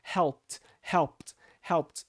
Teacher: a palavra help no passado vai ser pronunciado como se fosse um T no final, porque ela termina com P, assim como as outras terminam em K, CH, SH, enfim.